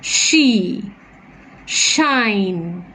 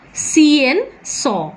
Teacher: Therefore, if you try to pronounce, you close your eyes and try to pronounce sh, you will feel that the tongue, it moves back. The tip and blade of the tongue moves back and is very near the back side of the alveolar ridge.